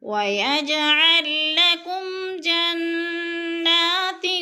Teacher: جنہ کی نون مشدد ہے، غنہ کریں گے، کھڑی زبر ہے، 2 حرکات کے برابر کھینچ کر پڑھنا ہے۔